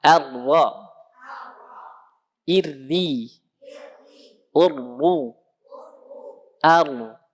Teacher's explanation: Yang benar menggetarkan ujung lidah dengan getaran yang halus. Tetap ada getaran, tapi getarannya halus.